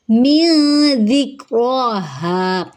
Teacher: من ذکرہا، من پھر سے اخفا ہو رہا ہے، نون ساکن کے بعد ذال آ رہا ہے، ذال میں سیٹی کی آواز نہیں آئے گی، نرمی سے پڑھیں گے، کاف سے ملاتے ہوئے کلکلا نہیں کریں گے۔